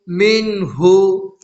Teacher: نون ساکن کے بعد حروف حلقی میں سے ہا آ رہا ہے، اس لیے نون کی آواز کو ظاہر کر کے بغیر گناہ کے جلد پڑھیں گے، اس کو اظہار کہتے ہیں۔